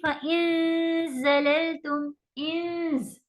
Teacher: ٹھیک ہے، زا جو ہے بزنگ ساؤنڈ ہے، دانت کے اوپر دانت آ جاتے ہیں لگ بھگ، تو آپ زبان کی نوک کو نیچے رکھ کے دانت پہ دانت لے کے نون کو کھینچیں گی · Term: اخفا